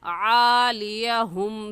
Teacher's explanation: हा हलक का आखिर जो सीने की तरफ है उससे निकलता है, तो इसको वाज़ेह करके पढ़ेंगे